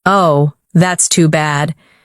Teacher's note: Oh, that's too bad. With soft, low tone.